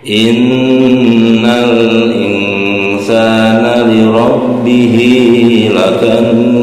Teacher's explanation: Ini ada nun bertasjid, yaitu hukum bacanya gunah ya, gunah musaddada. Nunnya harus ditahan 2 harokat.